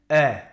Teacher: On ouvre encore plus la bouche et on obtient le son E. La langue n'a toujours pas bougé, mais la mâchoire inférieure est plus basse. C'est la dress vowel.